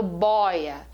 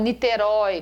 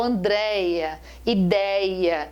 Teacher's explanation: quando eu falo bóia quando eu falo em niterói quando eu falo andréia ideia o ditongo ele é aberto